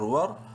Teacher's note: رو کو منہ بھر کے پڑھیں گے، رو ساکن سے پہلے زبر ہے واو پہ ، الف بیچ میں سائلنٹ ہے، حا میم زبر حم نون